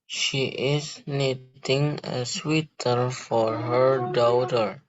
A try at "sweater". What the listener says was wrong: Nah, ini bacanya bukan sweater. Kalau sweater dari kata sweet manis, sweater lebih manis. Berarti bacanya sweater. Sweater dari kata sweat, keringat. For her, au bunyinya o. Daughter atau daughter, bebas. Kalau daughter, British English, daughter, American English.